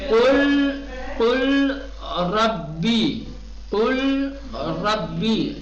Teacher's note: ادغام. لام کو حذف کر دیں گے، را کو تشدید دیں گے